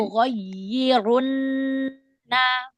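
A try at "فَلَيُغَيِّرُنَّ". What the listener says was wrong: Ya, nabernya jangan terlalu berlebihan. Yang penting dia lebih naik dari suara dibandingkan huruf sebelum dan sesudahnya. Fala yughayyirunna ghayyirunna.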